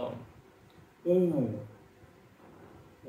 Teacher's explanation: आपको औठ को घुमाना पड़ता है तब जाके ऊ बनेगा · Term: औष्ट